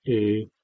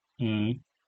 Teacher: secondly it can indicate nasality on vowels that's this middle so we have the vowel a and then we nasalize it a